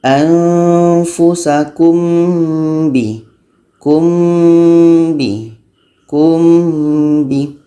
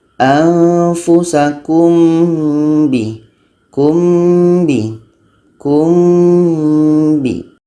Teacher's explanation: mim dan ba ni adalah sama-sama huruf bibir, jadi kita mudah untuk melafazkannya.